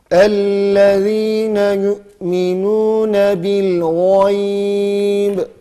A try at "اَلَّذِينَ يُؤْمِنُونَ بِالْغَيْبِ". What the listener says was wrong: Hemze böyle belli olsun. Yü diye böyle hemze şiddetini görelim.